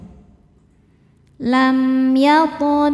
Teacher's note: Qaf sukun dihukumi qalqalah sughra karena ada huruf qalqalah yaitu qaf yang sukunnya sukun asli dan ada di tengah bacaan. Cara bacanya dipantulkan dengan pantulan yang kecil.